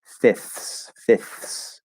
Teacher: the word fifths or fifth is special in american english because we drop the second f to make it easier to say but we will still keep the th